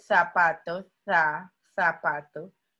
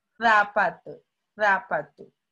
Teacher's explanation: tengo interdentales como la zeta española zapatos de zapato entonces ya son inter mentales porque son lengua